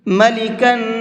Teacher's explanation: یہاں پر نون کے اندر غنہ کریں گے اس لیے کہ یہاں پر تنوین کے بعد میں نون ہے